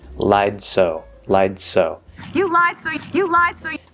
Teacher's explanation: The S kind of gets pushed through the D. And so we hear a little bit of the D coming out as she goes into the S.